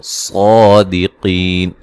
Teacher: صاد کو موٹا ادا کریں گے، قاف کو موٹا ادا کریں گے، یا مدہ ہے، وقفاً بڑی مد کے ساتھ پڑھ سکتے ہیں۔